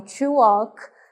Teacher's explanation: Como se esse L não existisse e o A tivesse som de O. Então, to walk, caminhar, ok?